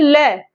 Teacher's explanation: तो हमारी जो वायु है वो बाहर निकलती है साइड से, दोनों साइड से · जब हम ल को बोलते हैं तो जो हमारी जीभ होती है, ठीक है, वो क्या है, वो तालु को छू के जाती है, ठीक है, लेकिन जो हवा होती है वो क्या होती है, साइड से निकलती है, ठीक है, तो उसको हम क्या कहते हैं, पार्श्विक।